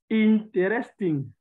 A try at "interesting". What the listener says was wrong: Not interest. You don't pronounce that E. Interesting. Interesting.